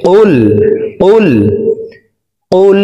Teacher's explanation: এখানে কফের উচ্চারণ করতে হবে। কফের উচ্চারণ জিহ্বার গোড়া তার বরাবর উপরের তালুর সঙ্গে লাগাইয়া পড়তে হবে।